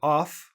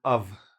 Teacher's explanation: It sounds like a v when it's pronounced, but even more often we just drop it altogether · So most of the time it sounds like: a or ov with a v sound, not an f sound.